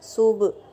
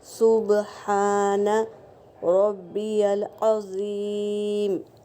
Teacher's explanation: با کے اوپر سکون ہے تو یہاں پر خلخلہ ہوگا،